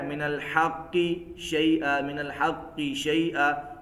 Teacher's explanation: قلقلہ واضح نہیں ہو رہا، تو یہ قلقلہ اضعف ہے